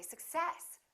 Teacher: we stress the second part and we say success